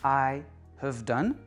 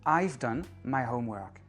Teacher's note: Donc le "have" devient apostrophe "ve" parce que c'est réduit. Les auxiliaires sont réduits, on les prononce avec un schwa.